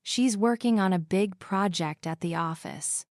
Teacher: Stress the words working, big project, and office. This will help you speak with a natural English cadence instead of sounding too flat or robotic.